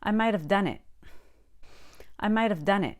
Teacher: you can say might of with a light d or you can say mida with no v at all